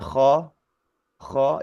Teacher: bacaan K ko kho itu diucapkan fathah ya gitu ya tapi meskipun tebal tapi tetap fathah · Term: bacaan layin